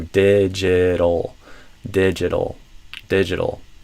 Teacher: this T will often become a flap T, which is like the R in par in Portuguese